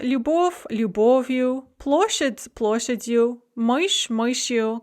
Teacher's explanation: And this you ending can never be stressed, so even if the noun is unstressed, as in the case of любовь, the ending will not take the stress in this case.